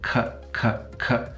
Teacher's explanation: the passive articulator is actually just soft palate